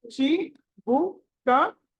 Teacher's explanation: చిబుక, చి అని తెలుసుకోవాలి. చిబుక చకి, చ అన్నది అల్ప ప్రాణము, ఒత్తు కాదు. చకి ఇకారం, హ్రస్వ ఇకారము, చి బు క.